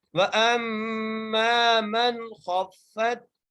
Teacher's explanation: آگے وَأَمَّا مَنْ خَفَّتْ، واو کے اوپر زبر ہے، حمزہ کو میم سے ملا رہے ہیں، غنہ کرتے ہوئے ملا رہے ہیں، میم کو ایک الف کی مقدار کھینچ کے پڑھ رہے ہیں. · نون ساکن کے بعد حروف حلقی میں سے خا آ گیا، اس لیے ہم یہاں پر نون ساکن پر غنہ نہیں کر رہے ہیں